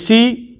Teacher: अगर हम ऋषि की बात करें तो यह बोला जाता है मूर्धा की सहायता से